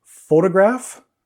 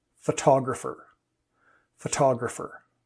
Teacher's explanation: the stress gets pulled gets shifted towards the end of the word